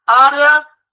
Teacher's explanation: Esse área tem um ditongo crescente. O E está mais fraco do que o A. Ele é crescente quando ele sai da semivogal para a vogal.